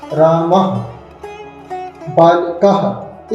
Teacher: इस प्रकार से विसर्ग को हम आधे हा के रूप में उच्चारण करते हैं।